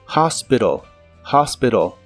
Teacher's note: en inglés americano es muy común pronunciar la T de esta palabra como R y suena como hospital, hospital.